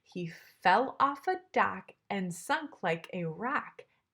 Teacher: it's unstressed stressed unstressed unstressed stressed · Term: unstressed and stressed syllables